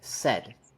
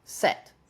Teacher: this word ends in a voice consonant said and this word ends in an unvoiced consonant set